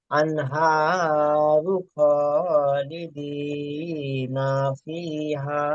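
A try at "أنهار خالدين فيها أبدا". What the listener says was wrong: টানছেন যখন আপনি টানছেন দোলা দিচ্ছেন কেন? সিম্পল ভাবে টানতে হবে। আনহারু খালিদি খ, এরকম দোলা দিচ্ছেন কেন? সেই জন্য আওয়াজটা খারাপ লাগছে। আনহারু খালিদিনা, পুরো আওয়াজটা খালিদিনা এরকম আওয়াজ হয়ে যাচ্ছে না, ওরকম আওয়াজ দোলা দিলে হবে না। আবাদা, ওখানে ছেড়ে দেন না, যেখানে দাঁড়ানোর জায়গা আছে সেখানে দাঁড়িয়ে যান।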